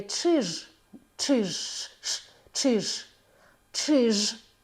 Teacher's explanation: намагайтеся підштовхнути діафрагмою останній звук Ж Чиж щоб вона була дзвінка